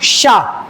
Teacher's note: ये शकार है क्योंकि यह तालु से बोला जाता है। उच्चारण स्थान में मैंने आपको बताया था तालु जो होता है ना ऊपर की तरफ होता है। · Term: तालव्य शकार